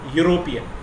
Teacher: Though the word European begins with E, which is essentially a vowel letter, but while pronouncing, we begin the word with Ya, European. So it becomes a consonant sound.